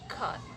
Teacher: 7 is velar. The active articulator is the back of the tongue, and the passive one is velum or soft palate.